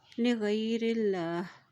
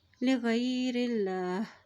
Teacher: اللہ کے نام سے پہلے زیر آ گیا ہے تو اللہ کا نام باریک ادا کیا جائے گا